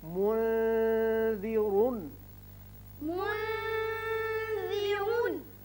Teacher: اب ذال باریک پڑا جاتا ہے